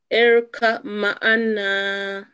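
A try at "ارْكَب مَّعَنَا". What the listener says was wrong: Kam ma'ana. Kam. Kam. Tashdid, little bit tashdid, stress on meme, yes?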